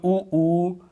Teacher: ऊ बोलने में क्या है, गोल टाइप का मुंह बन जाता है, तो वो क्या है, वृत्ताकार। · वृत्ताकार मतलब गोल मुंह बन जाए, ओंठों की स्थिति कैसी हो जाए, गोल हो जाए, तो वो क्या होते हैं, वो वृत्ताकार स्वर होते हैं।